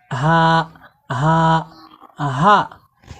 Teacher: আপনারা মুখের সামনে হাত দিয়ে প্র্যাকটিস করুন যে যখন গোলহা কন্ঠনালীর শুরু থেকে শক্ত করে পড়বো এই গোলহা উচ্চারণে মুখ থেকে কোন রকমের বাতাস বের হবে না।